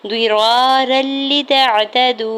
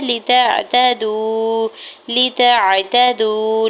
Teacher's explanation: الف سے پہلے زبر ہے را کے اوپر تو الف مدہ ہو رہا ہے، دو حرکت کھینچ کے ادا کریں گے۔ را کے دو زبر کی تنوین کو لام شدت کے ساتھ ملاتے ہوئے پڑھیں گے۔ یہاں پہ ادغام بغیر غنہ کے ہو رہا ہے، لتعتدوا لتعتدوا، لام کی زیر کو جلدی سے ادا کرنا ہے تاکہ زبر کو عین ساکن کے ساتھ ملاتے ہوئے پڑھیں گے، تاکہ زبر کو بغیر کھینچے ہوئے ادا کریں گے۔